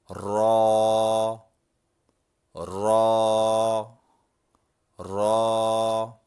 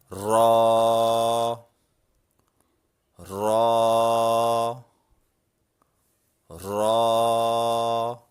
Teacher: را کو ادا کرتے وقت زبان کی نوک اوپر کے نرم تالو سے ہلکا سا ٹکراتی ہے۔